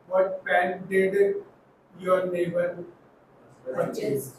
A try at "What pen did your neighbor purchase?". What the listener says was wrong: देखा क्या टुकड़ों में बोला है इन्होंने। अरे इकट्ठा बोलो सेंटेंस की तरह।